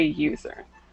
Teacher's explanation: The word user starts with U, which is a vowel, but user has that Y sound at the beginning, which is actually a consonant. Okay, so we don't say an user, we say a user.